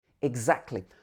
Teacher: We would miss out the t in the middle of the word.